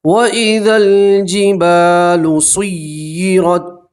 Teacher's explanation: را کے اوپر زبر ہو تو را کو موٹا پڑھتے ہیں، پور پڑھتے ہیں · لام کے اوپر جزم ہے اس لیے ہم نے ذال کو لام سے ملا کر پڑھا